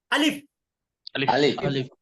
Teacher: এটা কোত্থেকে বের হবে হলকের কণ্ঠনালী অর্থাৎ হলক মানে কি কণ্ঠনালী হলক বা কণ্ঠনালীর শুরু হতে এই শব্দটি উচ্চারিত হয়